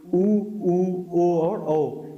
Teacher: इसमें पहले नंबर पे आता है व्रतमुखी, जिनके उच्चारण में ओष्ठ की स्थिति गोलाकार होती है वो हमारे व्रतमुखी स्वर कहलाते हैं।